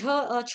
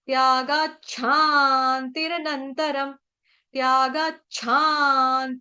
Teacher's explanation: छ का उच्चारण कैसे करेंगे झटके से मतलब उसको बाहर की तरफ धक्का मारना है